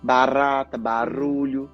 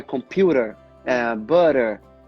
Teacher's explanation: O flap T, ele não pode prolongar. Então é computer, butter, eu não posso prolongar.